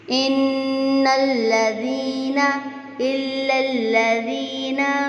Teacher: اب نون پہ غنہ بھی ہوگا اور اس کو ساتھ ملانا بھی ہے لام کے ساتھ